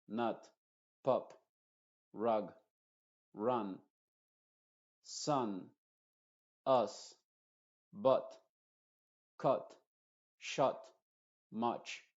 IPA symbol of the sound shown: ʌ